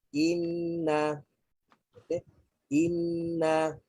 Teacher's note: nun ada sabdu, maka apabila kita nak sebut, kita bayangkan ada dua nun